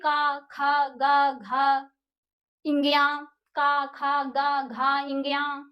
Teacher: हमारा जो साउंड आ रहा है ना वो कंठ से आता है।